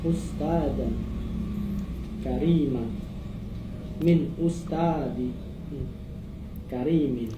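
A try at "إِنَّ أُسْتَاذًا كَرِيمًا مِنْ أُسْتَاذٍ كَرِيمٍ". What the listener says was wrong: Ya, teman kalau dalam contoh nakir sifat bacanya jedanya jangan lama-lama ya. Inna ustadan kariman min ustadin karimin. Jangan lupa intonasi juga diperlukan dalam baca.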